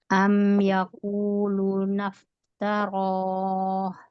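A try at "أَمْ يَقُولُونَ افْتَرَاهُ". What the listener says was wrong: Am yaqulu, lunya panjang.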